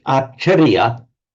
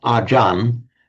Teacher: The Thais often drop off the final syllable when they're pronouncing it in Thai. And when a word in Thai then ends in a r, they actually pronounce it, again, a peculiarity of Thai phonetics, as a n. So what is acharya in Sanskrit, acharya in Pali becomes, essentially the same word, becomes ajan in Thai.